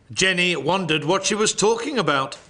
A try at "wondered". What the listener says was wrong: Wondered, not wandered. Well, it sounded like wandered.